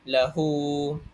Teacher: Jadi hendaklah kita bacanya dengan dua harakat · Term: mad silah qasirah